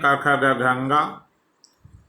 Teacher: कंठ वर्ण है क ख ग घ ङ